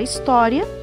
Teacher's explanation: a paroxítona, que é a penúltima sílaba mais forte